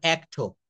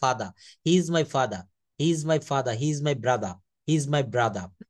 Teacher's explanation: ওয়ার্ডের শেষে আর থাকলে ব্রিটিশরা সেই আর এর উচ্চারণ করে না। আমি একটা শব্দ এখানে লিখেছি, যেমন অ্যাক্টর, এটাকে ওরা বলে অ্যাক্টো।